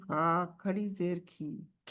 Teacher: पीछे से जुबान जो है वो ऊपर उठेगी जड़ उसकी तो फिर वो मोटा मोटा करेगी